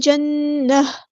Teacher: یہاں پر نون پہ غنہ زمانی ہو رہا ہے، اور جب گولتا آتی ہے تو اس کو اگر ہم وقف کرتے ہیں تو یہاں پر اس کو ہا میں چینج کر دیتے ہیں، نہ کہ اس کو تا کو ساکن کریں گے.